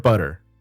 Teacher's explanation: When you say the word butter and you pronounce the T, your tongue hits the roof of your mouth in the same way that you would when you roll your R.